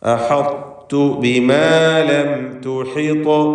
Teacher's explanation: സാക്കിനത്തായ മീം ഇൽഹാർ ഷഫവി നൽകി മണിക്കാതെ വെളിവാക്കണം.